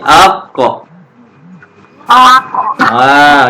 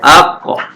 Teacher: Yang huruf qaf dengan ta belah kiri awak ni, kita qalqalahkan dia tebal sikit sebab huruf qaf dengan ta ni huruf yang tebal